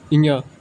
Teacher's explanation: सघोष नासिक में आता है ञ